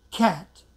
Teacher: if the T comes at the end of the word, like as in CAT, cat, usually you don't hear the last T sound clearly, or you don't hear at all.